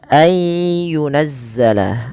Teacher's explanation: gunnah, memasukkan ke rongga hidung kita